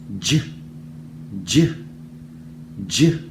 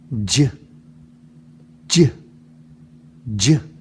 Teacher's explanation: made by putting my tongue up to the top of my mouth the tip part of my tongue and dropping it down real quick as I make that sound j j j take a closer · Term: wide stop